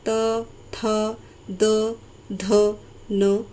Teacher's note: आपकी जो जिह्वा है, आपकी जो जीभ है, वो आपके दांतों को स्पर्श करती है, छूती है। तो दांत और जीभ की सहायता से जो ध्वनियाँ निकलती हैं उन्हें हम दंत्य ध्वनियाँ बोलते हैं। · दांत और जीभ की सहायता से जो ध्वनियाँ निकलती हैं उन्हें हम दंत्य ध्वनियाँ बोलते हैं। त वर्ग जो है, त वर्ग के सभी वर्ण जो हैं वो दंत्य ध्वनियाँ हैं।